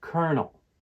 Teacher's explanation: The word kernel has 2 syllables. The word stress falls on the first syllable